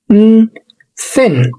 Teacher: وخلي بالك ان مش بيكون في اي زنه من منطقه الاحبال الصوتيه · كل اللي بتعمله ان طرف اللسان بيكون ما بين الاسنان، وبنخلي هواء يطلع كده ما بين الاسنان واللسان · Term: voiceless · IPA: /θ/